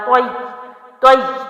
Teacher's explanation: لیکن اب چونکہ یا پر بھی تشدید ہے تو طوا کو ہم نے یا میں داخل کرنا ہے، طوا زبر یا، طوی طوی، زور لگائیں گے، سختی دیں گے، دو حروف کا ٹائم دیں گے